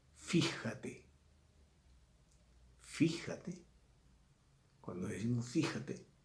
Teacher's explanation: esdrújulas que llevan su acento en la antepenúltima sílaba · Perdón, la última sílaba sería aguda. No lleva el acento en la penúltima, lleva el acento en la antepenúltima. Fíjate, lleva acento, es esdrújula.